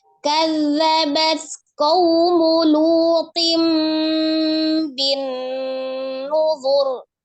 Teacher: Nah, itu ada nun tasdid wajib gunnah ya, dia gunnahkan paling sempurna akmal matakun. Kemudian ro-nya disukunkan dan karena sebelumnya adalah dhammah maka dibaca tebal. Dibaca tebal ya, tapi tidak panjang ya, tidak bin nuzur.